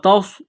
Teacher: صاد کو موٹا کرنا ہے، صاد میں سیٹی کی آواز پیدا کریں گے